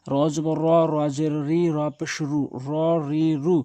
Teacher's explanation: কিছু কিছু হরফ রয়েছে যেগুলো জবরতে আকার গ্রহণ করে না, তার ভিতরে একটি হচ্ছে র। র জবর রা হবে না, র জবর র হবে। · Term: হরকতের উচ্চারণ